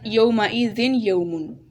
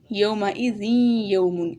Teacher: ہم نے آوازوں کو یہاں پر ملانا ہے ایک دوسرے کے ساتھ، تبھی ادغام ہوگا، یومئذ یومن، اس طرح پڑھیں گے۔